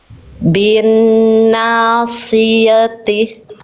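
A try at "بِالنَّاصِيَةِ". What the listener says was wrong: Shortnya belum tebal. Angkat pangkal lidahnya lagi.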